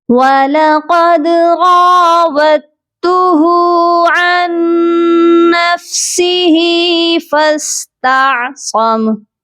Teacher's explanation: ہم نے نون ساکن کو نہیں پڑھنا، عین کو ڈائریکٹ نون مشدد کے ساتھ ملائیں گے اور غنہ بھی کریں گے